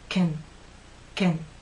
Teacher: When it's unstressed, using this first pronunciation, your lips are slightly more relaxed, but your tongue is still flat and pushed forward.